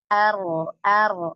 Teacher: ketika kita mengucapkan huruf ro, lidah kita kan bergetar